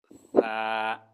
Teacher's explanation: সারোটা বলার সময় জিহ্বার আগা উপরের দাঁতের আগার সাথে লাগিয়ে মাঝখান থেকে হালকা একটু বাতাস বের হবে